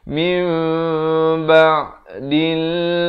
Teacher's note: Bunyi nun kepada apa? kepada bunyi mim. Daripada min jadi mim. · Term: hukum iqlab